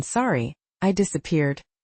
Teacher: One detail to notice while saying it is notice the intonation in "Sorry, I disappeared." The voice rises on sorry and falls on disappeared. Practice the pause between the apology and the question.